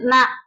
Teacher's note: நாவின் நுனி வந்து மேல்வாய் அன்னத்தின் முன்பகுதியை தொடுவதால் இந்த எழுத்தை வந்து உச்சரிக்கிறோம். இது வந்து நாவின் நுனி அன்னத்தின் நடுப்பகுதி இது முன்பகுதி.